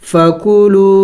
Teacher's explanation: واو مدہ کو ایک الف کے مقدار کھینچنا ہوگا۔